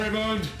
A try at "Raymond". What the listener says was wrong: You said Ray Moon. You emphasized the D.